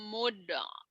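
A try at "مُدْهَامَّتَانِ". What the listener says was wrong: kol-kolah. Do-nya bukan kol-kolah ya. Mim, mob, goh. Mob, jangan mudu. Mob, mob. mim, mob, goh. Mim, mob, goh. Mim, mim, mob, goh. Mim, mob, goh.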